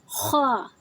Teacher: خا میں رگڑ کی آواز شامل ہوتی ہے، اس طرح کی آواز جیسے کہ ہم گلے کو صاف کرتے ہیں تو ایک رگڑ کی آواز، ایک خراٹے کی آواز آتی ہے، وہ شامل ہوتی ہے۔